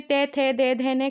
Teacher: जो आपकी जीभ रहेगी वो दांतों से टच करेगी